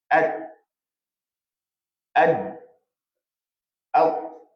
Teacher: Hujung lidah dan pangkal gigi atas bahagian hadapan.